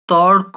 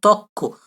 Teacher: রয়ের মানে লোপ হয়ে যাচ্ছে, এখানে রটা থাকছে না, তাই রকারের লোপ